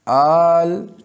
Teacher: تو حرف مدہ اور اس کے بعد اور تیسرا لام، اور تیسرا حرف لام ساکن ہے، آل، تو الف بھی ساکن بے جھٹکا اور لام بھی ساکن بے جھٹکا، تو یہ سکون یہ اصلی ہے، یہ سکون اصلی ہے، یہ کسی بھی صورت میں اس سے جدا نہیں ہوتا۔